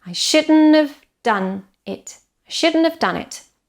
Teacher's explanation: Shouldn't have, very reduced as well. I shouldn't have done it. Should, stressed. Done, stressed.